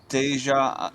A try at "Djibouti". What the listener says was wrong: Okay, ignore it. Just ignore the D. Ignore the D. You want the D. Djibouti.